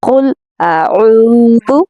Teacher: ذال میں سیٹی کی آواز نہیں لانی کیونکہ یہ نرم حرف ہے